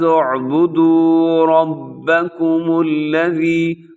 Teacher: رب میں را موٹا پڑا جائے گا، را کے اوپر حرکت ہے